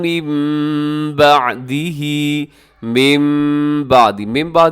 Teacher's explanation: اب کیا چیز بدلی جاتی ہے کہ نون ساکن اور تنوین کے بعد جب بھی با آتا ہے تو ہم نون ساکن کو اور نون ساکن اور تنوین کو میم کے ساتھ بدل دیتے ہیں، میم پڑھتے ہیں یہاں پر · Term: اقلاب